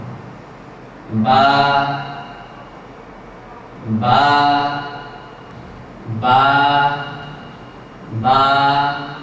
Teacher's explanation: উচ্চারণ করার সময় ঠোঁট নাড়াচাড়া করবেন না চেহারা নাড়াচাড়া করবেন না স্বাভাবিকভাবে দু ঠোঁটের ভিজা অংশ বা ভিতরের অংশ থেকে বা হরফটি উচ্চারিত হবে